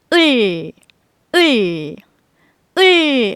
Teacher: 받침 리을은 다시 혀를 많이 구부려서 혀끝을 입천장에 붙이면서 소리를 내면 되죠. 을 하는 소리가 나고 을은 입모양이 같은 리을로 쓴다.